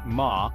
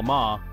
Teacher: tone gives a different meaning to the same syllable for instance ma high level means mother while ma Rising means hemp